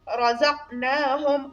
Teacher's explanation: را ډکه لوستل کېږي قاف ډک لوستل کېږي او قاف کې دلته قلقلې صغرا هم کېږي